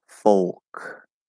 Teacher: folk is an l colored o instead of an r colored o